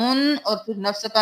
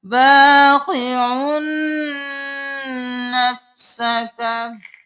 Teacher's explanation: आइन दो पेश नून उन आइन को इस नून के साथ मिलाना है